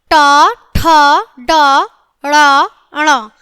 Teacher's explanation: मूर्धा का जीवा के अग्र सिरे से स्पर्श मूर्धन्य होता है